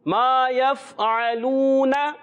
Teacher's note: ما حرف مدہ ایک الف ضرور کھینچنا ہے, اس کا الف ختم نہیں ہونا چاہیے.